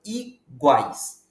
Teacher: meio uma vogal seguida de uma semivogal exemplo a palavra iguais depois do G você tem um U que é uma semivogal o a que é uma vogal e o i que é uma semivogal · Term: tritongos